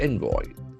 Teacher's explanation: The accent falls on the first syllable.